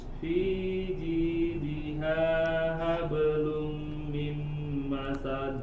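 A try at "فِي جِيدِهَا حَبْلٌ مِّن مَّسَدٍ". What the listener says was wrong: Fi jidiha, setelahnya ha. Ha setelahnya ha. Fi jidiha hablum. Tahan. Hablum mimma dua. Lum mim masad.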